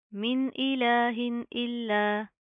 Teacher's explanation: अब यहाँ पर देखिए नून साकिन है, मीम नून ज़ेर मिन मिन नून साकिन उसके बाद हरूफ हल्की में से हमजा आ रहा है, ठीक है। तो यहाँ पर सिंपल इजहार होगा, हम नून की आवाज़ को जाहिर करेंगे, यहाँ पर हम कोई इख्फा कोई गुन्ना नहीं करेंगे।